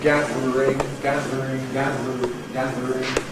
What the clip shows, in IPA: ˈgæðr̩ɪŋ